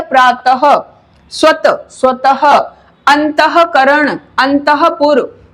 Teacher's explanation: विसर्ग का जो उच्चारण होता है वो हा होता है। जैसे लिखा हमने प्रात, प्रात, पीछे विसर्ग लगा दिया प्रातः, स्वत, स्वतः, अंतःकरण, अंतःपुर, तो ये शब्द जो हैं जहां विसर्ग लगाए वहां हमें हा का उच्चारण करना होता है।